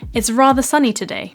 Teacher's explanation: R sound which is present in the word tomato father rather this ah sound where the mouth is very wide and open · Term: long wide R sound